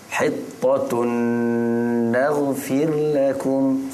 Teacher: tanwin dua hadapan berjumpa dengan Nun Kemudian didengungkan pada kadar dua harakat